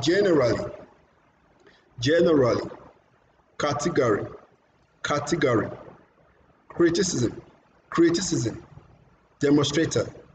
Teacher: Their first syllable is always louder and longer.